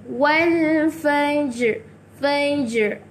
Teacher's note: Jadi bila kita nak habiskan ayat, huruf ra tu ada bunyi sikit-sikit dekat hujung.